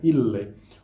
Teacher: Os dois L's é como se um terminasse a sílaba e o outro começasse a próxima, né? Ille vai marcar sempre uma sílaba longa.